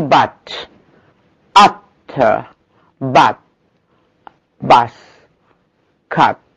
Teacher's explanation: اوكي، as in but, this is short, central open vowel.